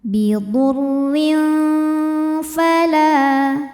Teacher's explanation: Karena ada tanwin kasrah menghadapi huruf fa. Cara membacanya tanwin disamarkan ke fa disertai bunyi dengungan. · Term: ikhfa hakiki